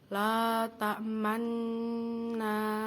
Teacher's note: mencampurkan domah pada sukun dengan memoncongkan bibir atau menyatukan kedua bibir